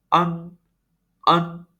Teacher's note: Ya, tidak begitu kedengaran, tidak begitu terang bunyinya. Maka kita sebut ini adalah vokal hidung, karena nada tersebut membutuhkan rongga hidung untuk dibunyikan.